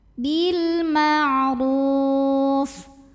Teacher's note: Huruf ra dibunyikan secara tafkhim karena ro-nya barisnya dhammah, bacanya tebal, pangkal lidah angkat.